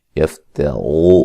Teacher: یفترو را کو موٹا ادا کریں گے